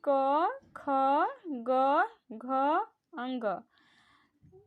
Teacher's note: इनका उच्चारण स्थान कंठ है। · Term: कंठस्थ व्यंजन